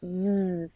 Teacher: front of your mouth just like the z sound is okay with that z you're putting actual voice behind it · you can actually hear the vibrations in your tongue